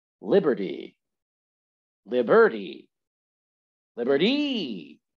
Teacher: once again the stress here is on the first syllable